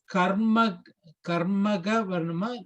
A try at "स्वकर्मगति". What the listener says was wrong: கர்ம கதி. Karma is one word, gati is one word.